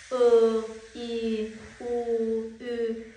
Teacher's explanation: Gördüyünüz kimi bu saə etdiyim zaman ağız boşluğum açılmır, dar vəziyyətdə qalır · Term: qapalı saitlər, qapalı saitlərin